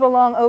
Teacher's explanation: it's sort of a long oh but it's really not quiet it's more of an O it's a little bit more open sound